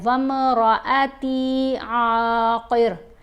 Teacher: حمزہ کی آواز کو آپ نے لمبا نہیں ہونے دینا، تا کو صرف لمبا کریں گے کیونکہ یہاں پر اضافی واول ہے، حرف مدہ ہے، وامرأتی عاقر قال كذلك الله يفعل ما يشاء۔